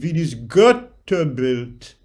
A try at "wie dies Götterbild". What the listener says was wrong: Sort of went back, and it needs to have both back and frontal presence. Release your jaw down and back. That's a trick. Wie dies Götterbild.